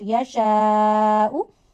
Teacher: Stretch mad because of hamza after it up to two fingers.